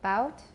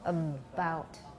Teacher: During the closure of the stop, we already have voicing.